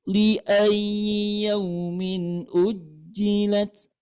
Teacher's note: Nah, di situ terdapat ya bertasydid ya. Ya bertasydid itu cara bacanya di situ terdapat naber ya. Naber itu naikkan suara.